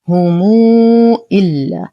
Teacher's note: نصل ميم الجمع الساكنة بواو مادية مشبعة لأن ما بعدها همز.